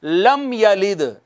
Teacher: رکیں گے نہیں میم پر، ٹچ کریں گے آگے گزر جائیں گے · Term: اظہار شفوی